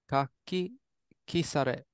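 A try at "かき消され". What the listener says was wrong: Not ki. That'd be kieru. Kaki kesare.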